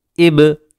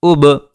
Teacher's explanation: हमज़ा बा ज़बर अब, हमज़ा बा ज़ेर इब, हमज़ा बा पेश उब। बा के अंदर भी कलकला होता है, इसमें भी आवाज़ लौट कर आती है।